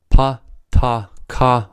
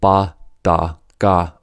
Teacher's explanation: With the pairs, pa, ta, ka are voiceless, and ba, da, ga are voiced.